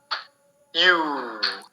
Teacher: lips get rounded. We have round shape of our two lips when we make the sound U.